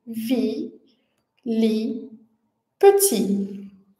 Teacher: a consoante final t, ela é muda